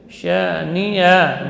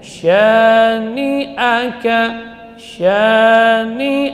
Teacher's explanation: Karena hamzah huruf syiddah, jadi dibaca dengan tertahannya suara pada makhrajnya